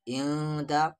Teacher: نون ساکن کے بعد دال ہے، دال حروف اخفا ہے تو یہاں پر اخفا کریں گے